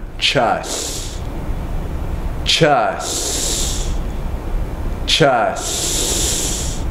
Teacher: take the tip of your tongue and place it behind your upper teeth on the roof of your mouth and then you blow air out of the sides